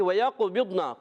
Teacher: واو کی ادائیگی ہونٹوں کی گولائی سے وَيَقْبِضْنَ، قاف میں قلقلہ کریں گے